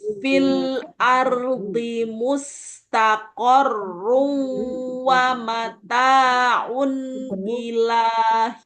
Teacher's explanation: karena ini tanwin, maka harus dengung kan karena ketemu wawu